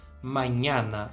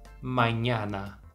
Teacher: a pronúncia dessas letras As todas tem que ser aberta